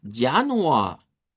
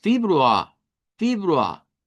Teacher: Entonces, de acuerdo a la pronunciación estándar, que la pronunciación estándar es no rótica, nos dice que esta R se convierte en una A media. Entonces, esa suena como que estuviéramos prolongando la A, pero son dos sonidos diferentes.